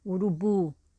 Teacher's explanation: no caso de urubu né o bo é a sílaba forte